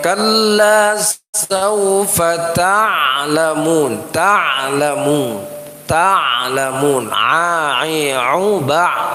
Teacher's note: Baca ain mesti harus dibaca betul-betul ain, karena ain itu makhrajnya halqi, maka ada di tenggorokan